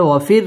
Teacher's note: ওয়াও ঠোঁট গোল করে উচ্চারণ করতে হবে ওয়াফির র বারিক হবে ওয়াফির আও জবরের বাম পাশে জজম ওয়ালা